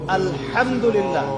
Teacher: এই হা এর মাখরাজ কোথায়? কণ্ঠনালীর মাঝখান থেকে।